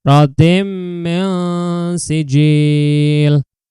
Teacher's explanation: bacaan nun sukun bertemu dengan sin. Cara bacanya itu samar ya, dipanjangkan selama 3 harokat juga, termasuk hukum bacaan ikhfa hakiki.